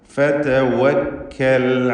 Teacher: ഫതവക്കൽ വാവ് ചുണ്ടുകളിൽ നിന്ന് തന്നെ വരണം. ചുണ്ടുകൾ വൃത്താകൃതിയിലാക്കി 2 ചുണ്ടുകൾക്കിടയിൽ നിന്ന് തന്നെ വാവ് ഉച്ചരിക്കുക.